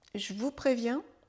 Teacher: Le « e » de « je » disparaît. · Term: contraction